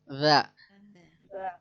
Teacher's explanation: Ujung lidah yang menyentuh ujung 2 gigi seri atas. Ada juga yang mengatakan bahwa ujung 2 gigi atas dan bawah.